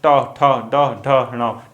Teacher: जो जीभ का आगे का भाग होता है वो मूर्धा को स्पर्श करते ही वापस आ जाता है। यानी इसकी डेफिनेशन लिख लीजिए आप, जीभ का अग्रभाग, ठीक है, अग्रभाग मूर्धा को स्पर्श करके तुरंत वापस, स्पर्श करके तुरंत वापस या झटके से वापस आ जाता है, ठीक है। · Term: उत्क्षिप्त व्यंजन